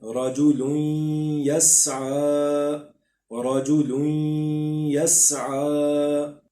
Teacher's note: یہ یا تنوین کے بعد یا آ گیا ہے، اس میں ہم نے غنہ کرنا ہے کیونکہ یہ حروف یرملون میں ہے.